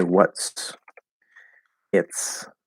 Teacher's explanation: we go into the t position and then we're going to push the s